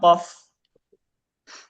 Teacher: Jadi dia pangkal lidah dekat dengan amandel. · Langit-langit lembek bertemu dengan bagian yang halus ya. Iya bertemu boleh kita bahasakan bertemu langit-langit yang bagian lunak, bagian yang lembut ya. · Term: qof